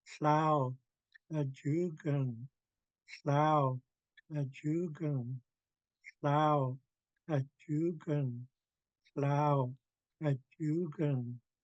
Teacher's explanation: We're kicking the K from the middle of the mouth. We're not using the front of the mouth or the back. We're using the middle.